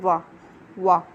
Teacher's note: दंतोष्ठ्य, दंत और ओष्ठ से बोलने वाला।